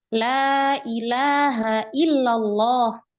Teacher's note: Ada mat. Maka kita harus membaca dengan mat, dengan panjang.